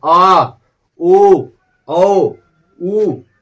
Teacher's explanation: आ ओ औ ऊ, ये सब पश्च से बोले जाते हैं